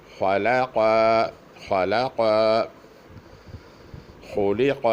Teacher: خلق یہ اس طرح ادا کیا جائے گا، خا بھی موٹی ہے، آخر میں قاف جو بڑی نقطوں والی ہے وہ بھی موٹی ہے، لام پتلا ہے، اس کو اس طرح ادا کرنا پڑے گا کہ وہ دونوں موٹے ہوں، درمیان میں پتلا